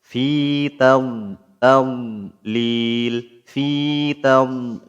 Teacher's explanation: Harus mulai diperbaiki ya. Jadi, Dadd itu bukan huruf qalqalah. Jadi, tidak boleh ada pantulan di situ. Enggak boleh dibaca fi tadlil, tapi harus enggak ada pantulan di situ. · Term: dialirkan suaranya